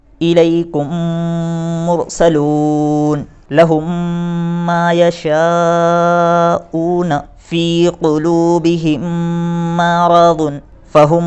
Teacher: ادغام شفوی کے اندر جب میم ساکین کے بعد اگر دوسرا میم آتا ہے تو غنہ کے ساتھ ملا کر پڑھا جاتا ہے